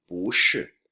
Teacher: 不 is usually fourth tone, but here 不, no, changes to a second tone in front of another fourth tone